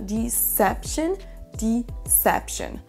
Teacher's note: l'accentuation qui se fait sur la deuxième syllabe. Donc, c'est la deuxième syllabe qui va ressortir plus et qu'on va plus entendre.